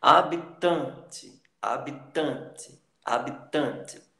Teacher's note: O tan é a penúltima sílaba, é a sílaba tônica.